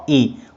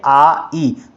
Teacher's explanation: तो अ के मुकाबले में पर आ में थोड़ा समय हमारा ज़्यादा लग रहा है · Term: दीर्घ स्वर